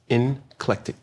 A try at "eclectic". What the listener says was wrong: It's eclectic. there's no N in it.